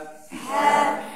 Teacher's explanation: পাতলা হবে খুবই পাতলা আর উচ্চারণ হবে গলার ঠিক মাঝখান থেকে